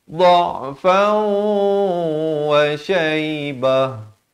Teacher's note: Ta marbutah kalau waqaf dia tukarkan ke bunyi ha.